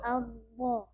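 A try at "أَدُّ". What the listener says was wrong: Ya, yang penting tak putus bunyinya. Itu yang bikin putus karena belum bergerak terbuka gitu. Addo. Padahal kan dorong saya begini. Addo. Addo. Udah banyak imam yang kelirunya di situ. Walad do syiddah tak putus. Padahal sifatnya rokhawah dan istitalah.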